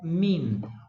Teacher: O que houve aqui é uma nasalização do i, que foi provocada pela presença da nasal inicial.